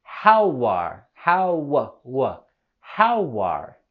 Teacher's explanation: With the words how are, we can link them together with a w sound.